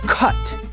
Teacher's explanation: Consonants are determined by voice, place, and manner, and a K is a voiceless back stop. When followed by a U, like in the word cut, that voiceless back stop of the K remains pretty easy to pull off.